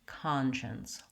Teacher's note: My letter SC makes the SH sound in this word. Conscience has first syllable stress, and so that's one of the reasons why the CON says ah in this word. So we're going to write it like with an AH, con.